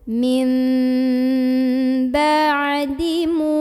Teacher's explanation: huruf mim yang baris dhammah dipanjangkan 2 harokat · cara membunyikannya bunyi nun sukun diganti bunyi mim sukun jadi tadinya menjadi Meme sambil berdengung bahan dulu Min bye dirimu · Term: mad tabi'i